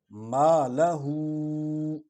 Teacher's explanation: ما لہو، میم کو یہ حرف شفوی ہے تو ہونٹ ملتے ہیں تو میم ادا ہوتی ہے